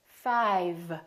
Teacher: we have F and V we have voiceless and we have voiced so you have to change from up here to down here